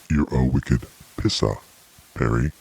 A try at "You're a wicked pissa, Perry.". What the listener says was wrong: A little bit more accent and looseness with your tongue might help.